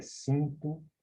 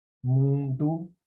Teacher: Você não escuta o som do N, tá? A mesma coisa é cinto, tá?